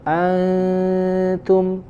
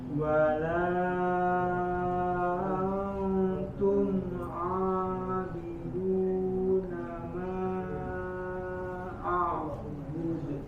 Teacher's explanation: Antum, lidahnya sudah di dekat di huruf ta.